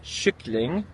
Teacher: spelled with a K, but it has that sh sound. In Bornholmsk, you say kyckling.